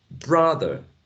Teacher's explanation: the first syllable bra is stressed so there we will find a vowel sound like a wedge which is a strong write a full vowel sound now in